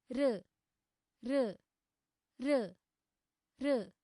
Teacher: अतः र वर्णस्य उच्चारणस्थानं मूर्धा अस्ति